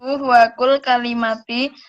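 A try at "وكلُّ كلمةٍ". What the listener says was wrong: Pakai tanwin, kullu kalimatin.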